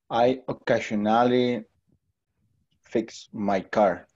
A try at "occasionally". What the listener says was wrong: Good, occasionally.